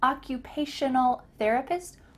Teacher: make sure that you use shun in the middle of that word